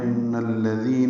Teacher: ان میں نون مشدد پہ غنہ ہے اور اس کو الذین کے لام سے ملانا ہے.